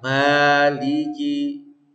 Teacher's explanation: Masuk hidung sebentar terus lepaskan rongga. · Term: alif madiyah